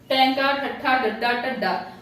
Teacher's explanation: ਟੈਂਕਾ ਵੈਸੇ ਤਾਂ ਇਹਨਾਂ ਨੂੰ ਉਲਟ ਜਿੱਬੀ ਕਹਿੰਦੇ ਆ, ਜਦੋਂ ਤੁਸੀਂ ਇਸ ਨੂੰ ਪ੍ਰੋਨਾਂਸ ਕਰੋਗੇ ਇਹ ਧੁਨੀਆਂ ਦਾ ਉਚਾਰਨ ਖੰਡ ਹੈ ਜਿਹੜਾ ਉਲਟ ਜਿੱਬੀ ਹੈ, ਇਹ ਜੀਭ ਉਲਟ ਜਾਂਦੀ ਹੈ ਜਦੋਂ ਤੁਸੀਂ ਇਹਨਾਂ ਨੂੰ ਪ੍ਰੋਨਾਂਸ ਕਰਦੇ ਹੋ।